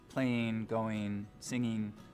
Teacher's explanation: one of the things we start to hear in the Mountain West generally is ing endings pronounced as een, so playing, going, singing, the whole western part of the country.